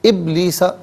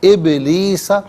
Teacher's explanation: إِلَّا إِبْلِيسَ، ابلیسا میں آپ دیکھیں ناظرین با ساکن ہے لیکن حرف قلقلہ ہے، تو آواز لوٹتی بھی محسوس ہونی چاہیے۔